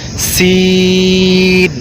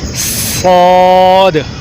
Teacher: باقی دونوں کی آواز میں سیٹی کی آواز ہوگی، لیکن اس کے ساتھ ساتھ سین اور صاد میں فرق یہ ہے کہ سین باریک پڑھیں گے اور صاد کو موٹا کر کے پڑھیں گے